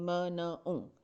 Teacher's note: जब एयर नाक से बाहर आ रही है तो साउंड भी फिर कैसी होगी? नेज़ल, यानी जैसे नाक से आवाज़ आती है। जैसे किसी का गला अगर ख़राब हो, नाक बंद हो, तो जैसी साउंड्स आती हैं ना उस तरह की साउंड प्रोड्यूस होती है, म न ऊँ।